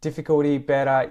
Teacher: the T in each of those is pronounced with the T flap